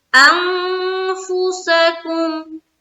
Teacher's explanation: آگے انفسکم انفسکم، یہاں پر نون ساکن ہے نا، نون ساکن کے بعد حرف فا، یہاں پھر اخفا کریں گے کیونکہ فا انہی 15 حرف میں سے ایک ہے، جو اخفا والے حرف ہے نا 15 اس میں سے ایک ہے فا، تو یہاں پر پڑھیں گے انفسکم، ہو گیا۔